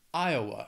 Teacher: let's just move on to the next one which is Iowa Iowa has three syllables and the stress is on that first syllable